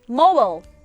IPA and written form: moʊbəl (mobile)